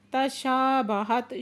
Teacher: تا ساکن ہے یہاں پہ ہمس ہو رہا ہے · شا پہ علی مدہ دو حرکت کھینچ کے پڑھیں گے